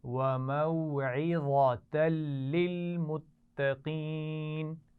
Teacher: اس میں وا کو موٹا پڑھنا ہے، عین اور اس کے بعد گول تا کو موٹا نہیں پڑھیں گے